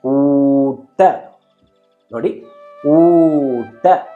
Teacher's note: ಟ ಎಂದು ಹೇಳಿದಾಗ ನಿಮ್ಮ ನಾಲಿಗೆಯನ್ನ ಬಗ್ಗಿಸಿ ಮಡಿಸಿ ಅದನ್ನು ಸ್ವಚ್ಛವಾಗಿ ಉಚ್ಚರಿಸಬೇಕು.